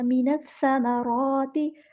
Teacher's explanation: हमने नून को सा के साथ मिला देना है, हमज़ा बस लम्हा ड्रॉप हो जाएगा, लाम जो है हमारा लाम शम्सिया है, तो हम इसको ज़ाहिर नहीं करेंगे